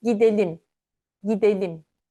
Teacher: As you can see, the verb gitmek undergoes terminal devoicing, and T in gitmek turns to D